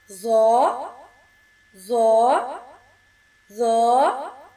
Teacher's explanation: زبان کی نوک اوپر والے دو دانتوں کے سرے سے لگنے سے ادا ہوگا، یہ بھی پر پڑا جائے گا۔